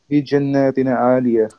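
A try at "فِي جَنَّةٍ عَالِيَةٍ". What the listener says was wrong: No, you're making a mistake over here. It should be pronounced في جناتنا عالية. So, do not prolong the sound of noon over here. We only have noon fata over here.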